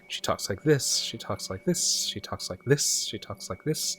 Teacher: it sounds like it's constantly sloping upward